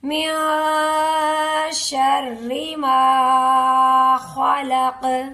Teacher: خوا کو پر کریں گے اور قاف حروف قلقلہ میں شامل ہے، قاف پر قلقلہ ہوگا. اگر قاف پر قلقلہ نہیں کریں گے تو ہمارا الفاظ صحیح سے ادا نہیں ہوگا.